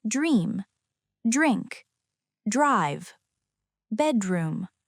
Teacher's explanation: The letter group DR can also produce a jur sound in American English. The D becomes softer and blends into the R. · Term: jr sound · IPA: /dʒr/